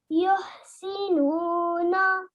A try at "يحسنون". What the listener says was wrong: Yes, well done. That was perfect.